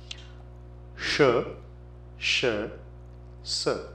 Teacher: the three s sounds sh sh s the first one is palatal second is cerebral and third is Dental